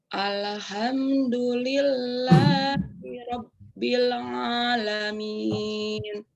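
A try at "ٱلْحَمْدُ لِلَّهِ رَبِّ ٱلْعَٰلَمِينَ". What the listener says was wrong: Ditekan lam sukunya. Alha. Jangan Alhamdulillah. Coba. Ya, jadi kalau ditekan dia tidak akan mengekor.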